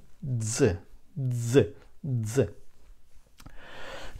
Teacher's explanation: to this it will be again we put the tongue on the upper teeth and then we give air together with voice